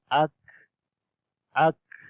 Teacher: جب سانس کو چھوڑیں گے یعنی ہمس بھی ہوگا تو اس وقت کاف کے اندر کمزوری آتی ہے